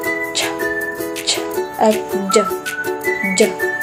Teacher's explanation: sa bahagyang pagsara ng ibabaw ng dulong dila sa matigas na ngala-ngala kasunod ng pagsutsut, tulad ng mga tunog na ch, ch, at j, j. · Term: affricative